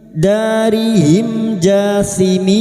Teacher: Berikutnya, mim sukun bertemu jim idhar syafawi. Mim sukun dibaca jelas tanpa mendengung.